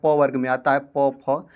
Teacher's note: ओष्ठ। इसका उच्चारण करते समय आपका ओष्ठ का प्रयोग करना पड़ेगा।